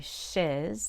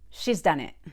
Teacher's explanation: i like to keep the long e and she's